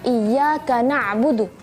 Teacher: ketika melafalkan huruf Ain Khususnya ketika sukun ya hati-hati jangan sampai kita membacanya Hamzah